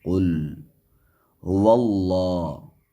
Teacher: ول ہا کو نہ کھینچے، واو کو لام سے ملائیں اور اللہ کے لام کو موٹا پڑھیں، اس لیے کہ لفظ اللہ سے پہلے زبر ہے · قل لام کو جھٹکے سے نہ پڑھیں اور زیادہ لمبا بھی نہ کریں، بلکہ اس میں صفت توسط ہے